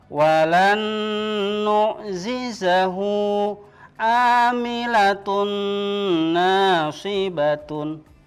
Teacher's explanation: atau tanwin pathak Thailand kasrotain domatain bertemu dengan huruf nun maccabi cara membacanya adalah melebur dan mendengung